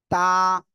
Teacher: জিহ্বার আগা সামনের উপরের দুই দাঁতের গোড়ার সাথে লাগিয়ে এই অক্ষরটা উচ্চারিত হয়